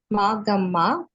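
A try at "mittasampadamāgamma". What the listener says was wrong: Actually, there is no long A in the first line. Mitta Sampada, not Magama. Mitta Sampada Magama. Short A.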